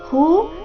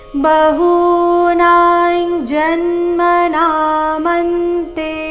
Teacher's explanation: ಹೂ ದೀರ್ಘ ನಾ ಸಹ ದೀರ್ಘ ಅನುಸ್ವಾರದ ಉಚ್ಚಾರಣೆ ಚ ವರ್ಗದ ಅನುನಾಸಿಕದ ರೀತಿ ಬಹುನಾಂ ಜನ್ಮ ನಾಮಂತೆ ಜನ್ಮ ಜ